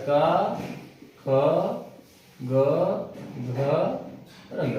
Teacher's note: ये कंठ से उच्चारित होते हैं तो कंठ होगा